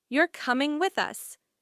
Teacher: if you say, You're coming with us, with a flat tone, it sounds like a statement